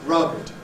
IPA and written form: rʌbd (rubbed)